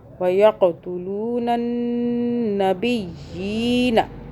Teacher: नून मुशद्दद आ रहा है, यहाँ पे हम गुन्ना करेंगे 2 सेकंड का